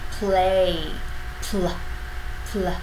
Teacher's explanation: Phụ âm đôi này khá là khó, thế nên mọi người cần chú ý hết sức khi đọc. Chúng ta chuẩn bị khẩu hình của âm p. Tuy nhiên khi bật luồng hơi ra thì chúng ta sẽ sử dụng cả dây thanh quản để tạo luôn âm L.